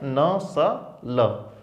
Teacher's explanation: इनको बोलते समय हमारी जीबान मसूड़ों पे स्पर्श करती है और हवा वहां से निकलती है